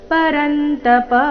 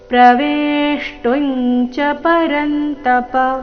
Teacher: ಕೊನೆಗೆ ಪ ರಸ್ವ, ಅದನ್ನ ದೀರ್ಘ ಮಾಡಬಾರ್ದು.